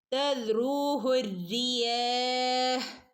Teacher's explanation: തദ്റൂഹു റിയാഹ്, റഅന് ശ്രദ്ധയുണ്ട്, റഅനെ ഒന്ന് കനപ്പിച്ചു കൊടുക്കണം · ഇവിടെ വൗ മദ് വന്നിട്ടുണ്ട്, 2 അനക്കം നീട്ടി ഓതി കൊടുക്കണേ